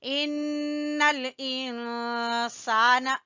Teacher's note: نون کے اوپر غنہ کریں گے کیونکہ نون مشدد ہے، اور یہاں پر اخفا ہوگا۔